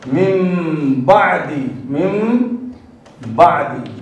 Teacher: نون ساکن کو میم سے بدل کر گنہ کے ساتھ ادا کریں گے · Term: اقلاب